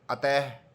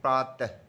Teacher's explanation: हल्का सा ह की आवाज आती है इसका उच्चारण करते समय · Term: विसर्ग